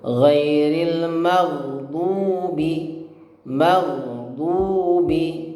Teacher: Nah, ini salah. Ya, yang tepat adalah tidak ada pantulan pada ghain yang sukun. Ghairil hanya masuk saja huruf mim itu, ya, dan mengalir, ya.